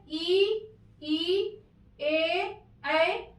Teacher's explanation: आप उच्चारित करिए, ई को करिए, ई ए जीभ का अग्र भाग ही चल रहा है, पीछे कोई दबाव नहीं पड़ रहा, हमें केवल यहाँ जीभ पर ही देखना है, अपने जीभ पर, अपने जिह्वा पर, अपने टंग पर ही ध्यान देना है कि कहाँ प्रयोग कर रहा है। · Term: अग्र स्वर